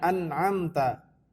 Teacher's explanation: Nah, oke, cara yang berbeda adalah cara membaca idhar syafawi. Idhar syafawi, idhar yang artinya jelas, maka cara membacanya tidak perlu ditahan atau didengungkan.